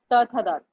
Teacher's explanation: जहां पर जीभ दांत को स्पर्श करती है वो दंतव्य है